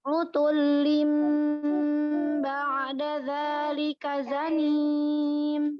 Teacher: Hati-hati ba'da ain jangan mantul.